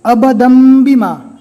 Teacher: تنوین کے بعد بھی اگر با آ جاتا ہے تو تنوین کو چھوڑ دیا جائے گا، صرف 2 زبر کی جگہ 1 زبر، 2 زیر کی جگہ 1 زیر اور 2 پیش کی جگہ صرف 1 پیش پڑھا جائے گا، اور وہاں پر چھوٹی میم لکھی ہوئی رہتی ہے، میم کے اوپر جزم دے کر پڑھیں گے۔